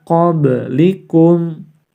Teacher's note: disini nun sukun harus dibaca samar-samar sebanyak 2-3 harokat karena bertemu dengan salah satu huruf qaf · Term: Ikhfa